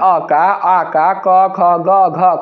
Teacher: अ वर्ण का उच्चारण स्थान है कंठ है